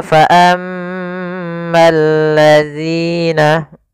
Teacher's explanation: al ketemu lam, maka bergabung menjadi lam yang ditasydidkan. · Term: alif lam syamsiyah